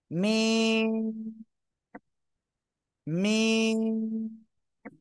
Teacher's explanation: দুই ঠোঁটের শুকনো জায়গা থেকে মিম অক্ষরটি উচ্চারিত হবে